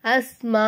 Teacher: அஞ்சு அலிஃப்க்கு நம்ம நீட்டணும் ஏன்னா பெரிய மத் கொடுத்திருக்காங்க